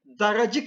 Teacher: daracık şeklinde telaffuz ederiz yine a sesi türemiştir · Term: ünlü türemesi